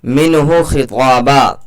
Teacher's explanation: मिनहु खिताबा, ता अलिफ ज़बर ता, यहाँ पर अलिफ मद्दा लगेगा क्योंकि अलिफ से पहले ता के ऊपर ज़बर है, थोड़ा सा खींच करके पढ़ेंगे।